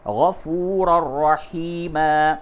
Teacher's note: اب یہاں تنوین کے بعد را ہے تو اس جگہ پہ ادغام ہوگا لیکن ادغام بلا غنہ ہوگا۔ وَكَانَ اللَّهُ غَفُورًا رَحِيمًا، رحیمًا، رحیمًا، میم الف 2 زبر من، یہاں پہ جب وقف کریں گے تو تنوین کی جو آواز ہے اس کو الف سے تبدیل کر کے وقف کریں گے، رحیمہ ہوگا۔